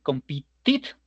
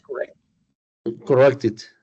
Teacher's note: nosotros vamos a agregar un sonido de vocal para que sí se escuche que estamos mencionando en pasado, porque si no no se va a entender. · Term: sonido it